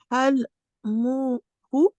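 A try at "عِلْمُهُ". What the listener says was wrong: Ouais, juste ici c'est une kasra. Ilmuhu. c'est un aïn.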